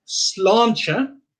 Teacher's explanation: we have the A with the accent, so that gives it the aw sound